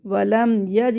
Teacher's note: ولم، یا جیم زبر یج، ولم یج، یہاں پہ اظہار ہوگا، اظہار شفی ہوگا، یعنی کہ ہم میم کو ظاہر کر کے پڑھیں گے